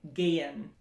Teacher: if you have a really strong American accent, you're gonna say gehen, and that y is gonna really come through.